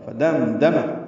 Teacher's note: فدم دم میم ساکن پہ اظہار ہے